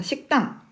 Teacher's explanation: 자, 식당, 왕릉. 식당 발음하면은 앞에 있는 이 받침 기역 때문에 뒤에 있는 디귿이 된소리가 됩니다